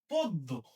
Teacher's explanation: এই অ এর উচ্চারণ সংবৃত হবে, তার মানে অ এর উচ্চারণটা ও এর মতো হবে